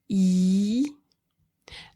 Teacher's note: when I say e, the tip of my tongue is touching the lower teeth, back of the lower teeth, and it is arching up to the pallet, which is the higher part of your mouth.